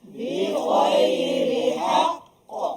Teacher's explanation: qalqalah paling tinggi sebab ada sabdu